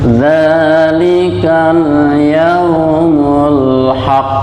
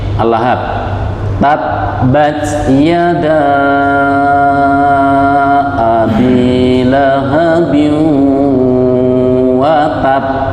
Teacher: ditahan dulu baru dilepas pantulannya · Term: qalqalah